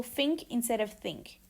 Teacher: we have the substitution of the F sound for th. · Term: mixed fricatives